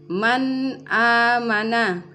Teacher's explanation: Penyebutan yang salah seperti man amana, ya, nun sukunnya tidak boleh didengungkan karena dia bertemu dengan hamzah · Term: izhar halki